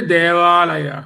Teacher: దేవలో అకారము, ఆలయలో ఆకారము, దీర్ఘం ఉంది. ఆ రెండింటి కూడా వచ్చేది దేవాలయ. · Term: దీర్ఘాక్షరం